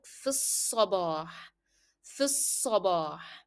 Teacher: you will not pronounce alif as well. You will move directly from f to sa. It will sound like f sabah, f sabah.